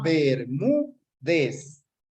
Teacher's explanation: Se acentúa, tiene el mayor acento de voz en la penúltima sílaba, termina en Z, es decir, en cualquier consonante, por lo tanto, se tilda.